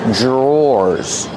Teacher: The pronunciation is not like the spelling. Pronunciation dr makes a J sound. J plus the R together.